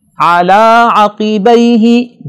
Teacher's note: دونوں جگہوں پہ عین کو واضح پڑھنا ہے اور قاف کو بڑا پڑھنا ہے